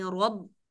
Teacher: इज़ क़ाल Ibrahim रब, रा, रा मोटी पढ़नी, रब, और बाकी जेर के साथ बारीक आवाज निकलेगी बगैर सांस के